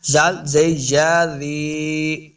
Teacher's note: یا مد ہے، اس کو 2 حرکات لمبا کر کے پڑھیں گے اور زال کو نرمی کے ساتھ پڑھنا ہے